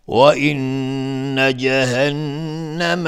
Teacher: نون تشدید دار، دو حرکت غنه میدیم